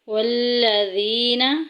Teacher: والذین یہاں پہ دیکھیں یا ساکن پیچھے زیر آ گئی ہے، یا مدہ ایک الف کے برابر لمبا کریں گے